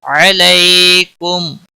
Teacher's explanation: علیکم علی یا لین ہے، تھوڑا نرمی کے ساتھ کھینچ کر ادا کریں گے. کم میم ساکن کے اوپر اظہار ہوگا، اس اظہار کو اظہار شفع کہتے ہیں.